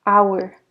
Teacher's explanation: we do not pronounce the h hour so it's a silent h it has a vowel sound